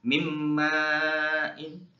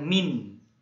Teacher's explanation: Jadi nun matinya dimasukkan ke mim. Jadi nun matinya jangan dibaca. Ini juga sama, tanwinnya juga jangan dibaca. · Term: idgham biguna